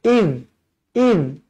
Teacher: Zal bukan huruf qalqala, jadi jangan baca iz. Tak nak, matikan terus.